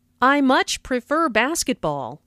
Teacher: notice how much is stressed to show that the speaker really likes basketball